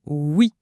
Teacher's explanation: Les notes insistent beaucoup sur la prononciation oui. Un son très net, hein, les lèvres en avant, presque un sifflement. Pas un oui à l'anglaise.